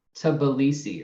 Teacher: Or we have a very reduced vowel after that T. So we fix the bad sequence by inserting a schwa